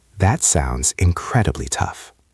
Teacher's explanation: Listen to my voice. Notice how my voice goes down at the end. This falling intonation shows that I am serious and sincere.